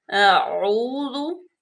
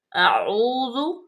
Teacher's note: ذال جو ہے حروف لطفی ہے، اس کو بالکل نرمی سے، اور ذال کے اوپر سیٹی کی آواز بالکل بھی نہ آئے